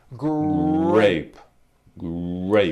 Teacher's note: even say the word great did you see that and notice in the word grape the r sound is stronger and you even hear it more than the G sound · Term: R blends